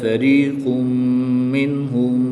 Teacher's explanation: یہاں پر ادغام مع الغنہ ہوگا، یعنی غنہ کر کے پڑھیں گے